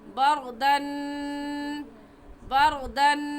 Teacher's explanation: یہاں پر غا ساکنہ سے پہلے زبر ہے تو اس غا ساکنہ کو ہم پر یعنی موٹا کر کے پڑھیں گے